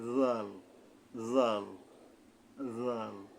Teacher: এর উচ্চারণটা হলো সামনের উপরে দুই দাঁতের আঘাত থেকে নরম ভাবে হবে